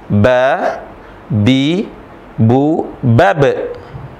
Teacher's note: sukun sifatnya karakteristiknya adalah ciri khasnya adalah dia mantul kalau qqalah kalau sukun ba bi bu bab mantul baik dia di tengah atau di akhir bunyi pantulannya harus jelas